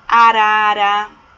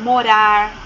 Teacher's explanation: a vibração que a gente sente na ponta da língua do som fraco